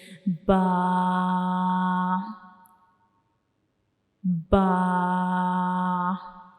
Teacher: हमारा ऊपर वाला हंठ नीचे वाला हंठ इन दोनों के जो अंदर वाली साइड पे गीला हिस्सा होता है उसको हम आपस में टच करते हैं।